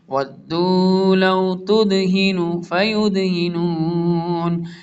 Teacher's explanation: دال ساکن ہے اس لیے قلقلہ کریں گے